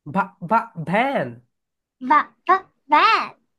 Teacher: ভি যখন উচ্চারণ হবে তখন হচ্ছে উপরের দাঁত নিচের ঠোঁটের সঙ্গে লেগে যাবে, আপার টিথ লোয়ার লিপের সঙ্গে লেগে যাবে।